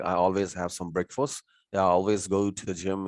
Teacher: Okay, and the next word begins again, with vowel. We can smooth the link out by adding y sound. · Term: assimilation rule